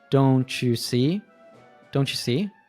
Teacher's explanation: When a T is followed by U, they usually morph into a chew, and then link.